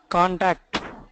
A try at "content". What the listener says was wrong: Contact. The spelling is C-O-N-T-E-N-T, not C-O-N-T-A-C-T. Why are you saying contact? Content.